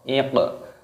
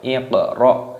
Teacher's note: Qafnya berharokat sukun maka dipantulkan di qalqalah